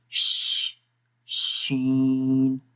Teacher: شین میں تھوڑی سی اسپیس ہے جہاں سے ہوا نکلتی ہے، خارج ہوتی ہے